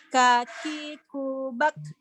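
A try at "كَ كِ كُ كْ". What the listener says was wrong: Oh, udah mulai sembuh.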